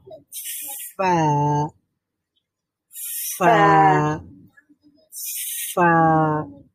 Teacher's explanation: আচ্ছা, তো ফা এর মাখরাজটা কি বলেন? উপরের দুই দাঁত নিচের ঠোঁটের ভেজা অংশে লাগবে। · ফা এটা উচ্চারণ করার সময় আমাদের উপরের যেই ফ্রন্ট টিথ আছে, সেই একেবারে সামনে যে দাঁতটা আছে সেটা হচ্ছে নিচের আমাদের যে ঠোঁট আছে, ঠোঁটের বটমে লাগবে, ঠোঁটের একেবারে মধ্যবর্তী জায়গাতে আমরা দাঁতটাকে লাগিয়ে উচ্চারণ করব ফা, ফা, ফা।